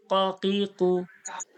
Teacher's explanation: এই যে কণ্ঠনলী, কফ, এই যে জিহ্বার গোড়া দেখুন, জিভ এইটা তো জিভ, জিভের যে গোড়া দেখুন, গোড়া এবং গোড়ার সোজাসুজি যে তালু, এই যে তীর চিহ্ন দেওয়া রয়েছে, সোজাসুজি তালু, জিহ্বার গোড়া ওর সোজাসুজি তালু থেকে উচ্চারণ হয় কি কফ